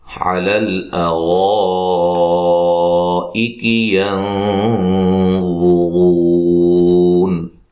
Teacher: علی الارائک ینظرون، لام کو ہلانا نہیں ہے، را کو موٹا ادا کریں گے اور یہ جو مد ہے یہ مد واجب ہے، الف مدہ کے بعد حمزہ اسی کلمہ میں ہے۔